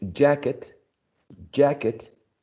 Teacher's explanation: jacket has two syllables and the one stressed is the first syllable